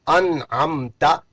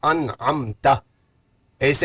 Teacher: وہاں اظہار کر کے ظاہر کر کے پڑھیں گے، جس میں غنہ وغیرہ کوئی بھی نہیں ہوگا۔